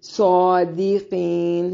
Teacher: सादिकीन, सौद को मोटा अदा करेंगे। की या मद्दा है, इसलिए वक्फ की सूरत में मद करके पढ़ सकते हैं।